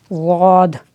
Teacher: हाफ़े लिसान कहते हैं मोटे किनारे को। ज़बान की करवट और ऊपर की 5 दाढ़ें